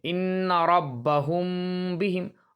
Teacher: میم ساکن کی آواز کو غنہ کے ساتھ اخفا کریں گے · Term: اخفاء شفوی